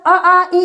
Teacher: स्वर अ आ इ जब बोलेंगे तो यहां पर कंपन होगी हल्का सा झनझनाहट होगी तो व सघोष के अंतर्गत आते हैं तो सभी स्वर सघोष